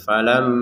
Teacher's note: Di sini ada mim bertasyid, kita dengungkan ya.